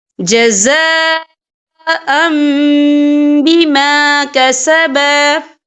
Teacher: تو یہاں پر اقلاب ہوگا، یعنی تبدیلی ہوگی، تو ہم یہاں میم کا تلفظ کریں گے اور ہم یہاں غنہ بھی کریں گے.